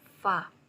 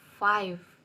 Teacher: Number two is labiodental sounds, namely fa and va. Consonant sounds, which are produced by connecting the lower lip and upper teeth